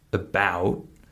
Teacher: that first syllable, was very, very short, and the second syllable, bout, was probably four times longer than the first syllable.